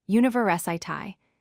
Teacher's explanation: University has stress on the third syllable, university.